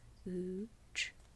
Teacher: in casual or standard American English, we pronounce the T actually as a ch sound